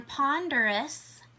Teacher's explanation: in the OUS spelling pattern, we're not hearing the O sound. We're just hearing the U straight to the S sound